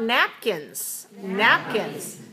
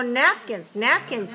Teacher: two syllables stressed on the first one so the K is not at the beginning of a stressed syllable